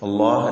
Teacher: ഇസ്മുൽ ജലാലയിലെ ലാമിന് തഫ്ഹീം കൊടുക്കണം തടുപ്പിച്ച് ആലാമിനെ ഉച്ചരിക്കണം